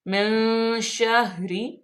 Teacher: نون ساکن کے بعد شین آ گیا تو یہاں پہ اخفا کا قاعدہ لاگو ہوگا ، اخفا کریں گے، من شہری،